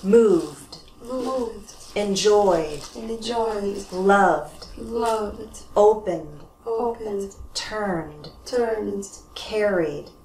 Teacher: They're all voiced, so we add on a d sound